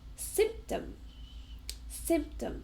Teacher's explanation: two syllables and we stress the first one and it's also a noun symptom.